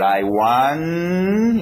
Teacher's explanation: I want, eu não falei o T ainda, porque eu não sei qual vai ser a próxima palavra